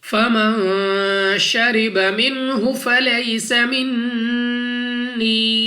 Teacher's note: نون ساکن کے بعد شین، حروف اخفا میں سے ہے، یہاں پر ہم نے غنہ کرنا ہے